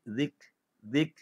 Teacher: Jangan bunyikan qalqalah zikr. Dia ada angin saja.